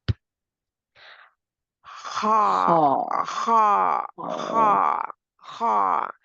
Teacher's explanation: it's just the back of my tongue, root of my tongue is up. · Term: letter ha